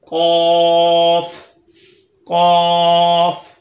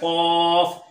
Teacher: ज़बान की जड़ और तालू के नरम हिस्से से अदा होता है। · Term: हरफे लहविया